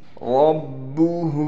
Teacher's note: ہا پر الٹا پیش ہونے کی وجہ سے ہا کو ایک الف کی مقدار کھینچا جائے گا